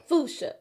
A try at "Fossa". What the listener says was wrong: You added extra syllables. It's Foosh. No, you saying Foosha. So you're adding a sh. Foosh. Foosh.